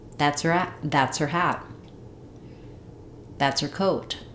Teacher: very similar here what we cont trct that is to that's we drop the H of her so it sounds like that's her